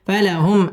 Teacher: ফালাহুম মিম second ইজহারে খাস গুন্না ছাড়া পড়তে হবে